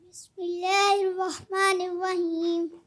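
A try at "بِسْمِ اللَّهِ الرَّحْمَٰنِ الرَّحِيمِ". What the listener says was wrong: اچھا بسم اللہ الرحمن الرحیم میں ہا کی ادائیگی کلیئر کرنی ہے.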